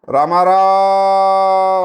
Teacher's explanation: ఏదైనా దూరంగా ఉన్న వాళ్ళని పిలిచేటప్పుడు రామారావు అన్నాను, అప్పుడు అంత దీర్ఘంగా సాగదీస్తాం అచ్చుని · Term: ప్లుతం